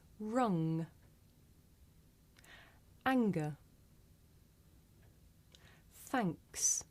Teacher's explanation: make this sound towards the back of the mouth mmm and if you do this sound correctly you can feel a vibration in your nose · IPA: ŋ